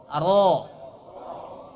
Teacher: Ra ujung lidah berikut gigi seri yang sejajar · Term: huruf ra